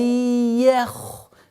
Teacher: С мягкого на твердый уходим на твердый ха.